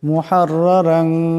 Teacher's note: 2টি রার উপর জবর আছে, 2টি রাকে মোটা আওয়াজে পড়তে হবে